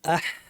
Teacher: প্রথমে আহ বলা প্রশস্ত শুকনা আওয়াজ হবে